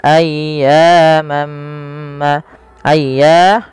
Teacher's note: panjangkan suara ya-nya sepanjang 2 harakat karena ia mad tabi'i dan tekan ya-nya dulu